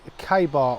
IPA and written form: ˈkeɪ bɑːr (KA-BAR)